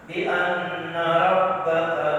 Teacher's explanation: Bi anna nun bertasydid ghunnah atau wajibul ghunnah.